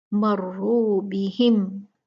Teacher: میم ساکنہ کا اظہار ہے، اس کو زیادہ کھینچنا نہیں